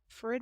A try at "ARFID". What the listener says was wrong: ARFID. It's ARFID, not AFRID.